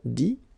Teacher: phonetically it's I as well because you don't pronounce the final T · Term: the sound I